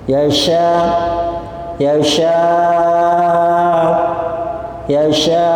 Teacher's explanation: Ada lagi yang ditambah ismam, mencucu dengan sempurna itu.